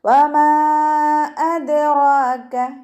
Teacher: അദ്റാക റ ഉയർത്തിയിട്ട് വേണം പറയാൻ. റ ഫതഹയാണ്, കൂടെ ചെറിയ അലിഫ് മദ്ദും വന്നിട്ടുണ്ട്. അപ്പോൾ 2 കൗണ്ട് നീട്ടുക.